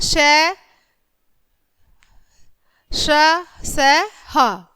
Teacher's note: ऊष्म का अर्थ होता है गर्म। इन व्यंजनों का उच्चारण करते समय वायु मुंह के विभिन्न भागों से रगड़ खाती हुई बाहर निकलती है। व्यंजनों में इस रगड़ के साथ बोलने पर गर्मी उत्पन्न होती है, इसलिए इन व्यंजनों को ऊष्म व्यंजन कहते हैं।